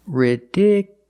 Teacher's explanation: the stress moved to the second syllable ridiculous so the last two syllables are short it's not you